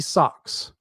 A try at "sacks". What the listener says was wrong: You said socks instead of sacks.